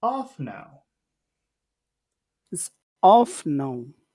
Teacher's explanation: we'll want to go high but we'll have to finish low because you always finish low